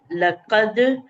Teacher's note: جی کاف کو دال سے ملائیں گے, کلکلا کریں گے